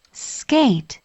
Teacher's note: 모든 무성음이 S 붙으면서 어떻해요 약간 유성음화 되거든요 그래서 끄 발음이 돼요